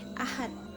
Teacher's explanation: Kemudian pada saat kita melafalkannya, ahad tersebut pada saat kita melafalkannya itu berbunyi T, ahad, mati T gitu. Padahal tulisannya adalah ahad, berakhiran D. Kemudian pada saat kita melafalkan, pelafalan kita itu berakhiran T. Ini salah satu contoh dari perubahan bunyi tersebut.